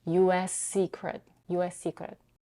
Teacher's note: is the same as the first consonant of the next word, secret, she merges the two sounds and pronounces one but elongated S